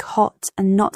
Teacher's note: words like hot and not have a more open a sound in American English compared to British accents. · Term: Open vowels